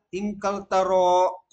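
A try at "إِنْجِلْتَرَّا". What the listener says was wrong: Itu ingkaltarro. Jelas-jelas tasdid. Kecil tasdidnya ya.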